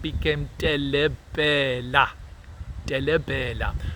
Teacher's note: It substitutes the r sound with l, and so trippel became telebhela.